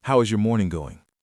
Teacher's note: But this is an open question, a wh question. If you raise your pitch at the end of how is your morning going, it sounds intense. It sounds like an interrogation. · With my voice going very high at the end, it feels aggressive, almost like I suspect you are having a bad morning. In casual office small talk, your pitch needs to gently drop at the end of the sentence.